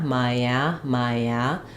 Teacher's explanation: have a little bit of vow to vow linking happening there so you're not going to see it in the dictionary but there is a little Y sound · don't want to break there or strong Y sound just naturally as I move from the ey to the a May Maya we have that Y sound